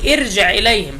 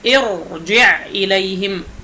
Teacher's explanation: فهذه كسرة عارضة فنفخم الراء، لا نقول قبلها كسرة يا شيخ فإذا نرققها، لا، هذا ليس صحيحا. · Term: التفخيم